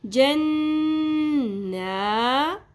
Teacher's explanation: نون کی آواز کو ہم نے ناک میں ٹھہرانا ہے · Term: غنہ